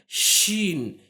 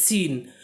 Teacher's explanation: शीन जब बोलेंगे तो यहां पर आवाज सिटी की आवाज जो है वो ज्यादा होती है